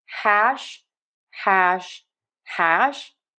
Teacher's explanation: But if you're curious why you're sounding different than many American speakers, it's because we have almost no friction on that h sound